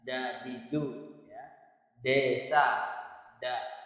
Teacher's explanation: kalau da da ini lidahnya nempel di langit-langit